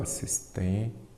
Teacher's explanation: Assistência, a sílaba forte é qual? A penúltima. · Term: paroxítona